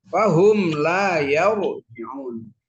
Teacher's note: harokatnya fathah, ro sukun. Jadi ini mesti dibaca tafkhim